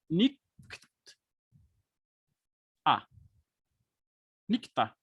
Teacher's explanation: Então temos aqui uma velar seguida de uma dental. Já tem um encontro consonantal aqui. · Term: Velar seguida de dental